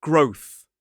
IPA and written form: ɡrəʊθ (growth)